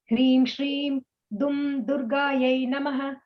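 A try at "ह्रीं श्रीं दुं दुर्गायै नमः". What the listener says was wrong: You don't have to pause completely after Dum. So you kind of go with the flow.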